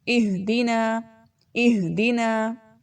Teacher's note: اس میں حمزہ کی آواز آنی چاہیے جھٹکے سے، اور ہا کی آواز دبنی نہیں چاہیے